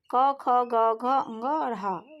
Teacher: यह कंठ से उच्चरित होते हैं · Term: कंठ ध्वनि